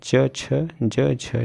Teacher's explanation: व्यंजन तालव्य व्यंजन मतलब तालु से जो बोले जाते हैं, च छ ज झ जो वर्ग होता है, मतलब च वर्ग सब क्या कहलाता, तालव्य।